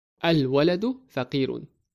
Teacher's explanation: Notice the word waladun starts with qamariyya letter. So we need to pronounce the letter lam of al.